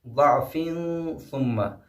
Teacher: فا پہ جو ہے تنوین ہے اور فا کے فوراً بعد سا آیا ہے، اس لیے یہاں پہ بھی اخفاء ہوگا